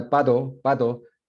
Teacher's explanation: that's a T that's becoming voiced. And so it's almost an approximate D.